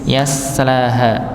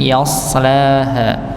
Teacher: huruf Sin dan SH ini tempat keluarnya huruf sama yaitu ujung lidah bertemu dengan gusi ba bawah atau lebih tepatnya gusi ujung gusi bagian bawah ng